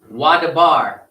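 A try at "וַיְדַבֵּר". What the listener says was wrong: Okay, I think I had should be Wayadabar, not Wadabar.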